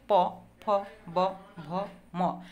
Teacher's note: বাতাস দুই ঠোঁটের মাঝখানে বাধাপ্রাপ্ত হয়ে বের হয়ে আসে, এই জন্য এগুলো হচ্ছে ওষ্ঠ ব্যঞ্জন · দুই ঠোঁটের সাহায্যে, উপরের ঠোঁট নিচের ঠোঁট, এই দুইটা ঠোঁটের সাহায্যে যে ধ্বনিগুলো উচ্চারিত হয়